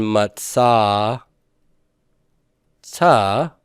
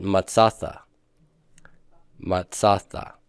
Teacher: So when the aleph, at least phonetically, disappears, it's still written, but you don't pronounce it anymore, the short pathak compensatorily lengthens to make up for the loss of the aleph as a sound. And so everywhere I would have had a pathak, I'm going to get a kametz throughout the paradigm in Hebrew.